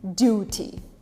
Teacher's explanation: in british it stays as a t